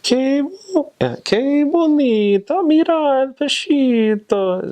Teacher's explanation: San Juaninos also have a very sing-songy voice